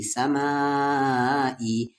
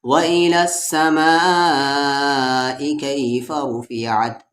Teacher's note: مد کے سمبل کے بعد حمزہ آیا، یعنی اس مد کو 3 سے 4 الف کے برابر کھینچیں گے۔